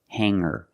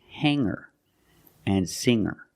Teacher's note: I don't pronounce the G sound it's just the nasal um linked together with the ER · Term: no G sound